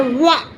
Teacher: वा को बोलने में दांत और ओठ दोनों का प्रयोग लग रहा है वा, इसलिए ये दंत ओष्ठ में आता है।